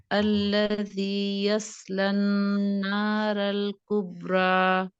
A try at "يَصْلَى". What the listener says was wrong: یش صاد یشلن. ٹھیک ہے تھوڑا سا سین ہے لائٹ ہے. یسلن تو صاد کی پریکٹس کریے. یشلن اور نار موٹا.